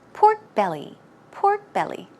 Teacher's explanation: it's pork belly stress goes right here on the belly